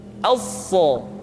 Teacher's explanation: Huruf sa sama seperti huruf sin dan huruf za, yaitu lidah berada di antara dua gigi seri. As-sa. Untuk memudahkan pengucapan huruf sa, Perhatikan sifat as-safir yang dimiliki oleh huruf sha, yaitu suara tambahan yang terdengar menyerupai dengan suara angsa.